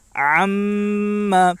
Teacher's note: میم کے اوپر تشدید ہے، اس لیے میم میں ایک الف کے برابر غنہ ہوگا۔